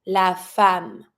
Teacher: In this one, it's an exception. The wife, you're going to be pronouncing the E like an A, la femme.